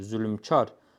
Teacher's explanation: Ona görə də bu söz iki hecalıdır. Vurğu da ikinci hecaya düşür.